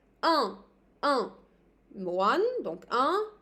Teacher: I have to put my finger on my nose, again, it's a nasalisation